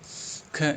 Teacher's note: ख स्पर्श व्यंजन कंठ ध्वनि अघोष महाप्राण ध्वनि है।